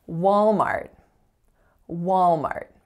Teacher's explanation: the strongest syllable is of course the first